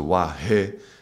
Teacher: There's other understandings of how does it vibrate, like Wa being, you could say it's second chakra, and He is, you could say, vibrates in the heart, because He is an aspirated sound and requires more air. So air stimulates the heart.